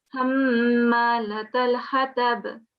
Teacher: keep the nasal sound in your mouth for 2 seconds on the Mim Ghunna as well